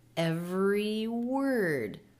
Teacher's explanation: E vowel from every going right into the W consonant for word.